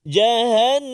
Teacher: Dan nun yang bersabdu, hati-hati 2 harakat juga, wajib al-ghunnah.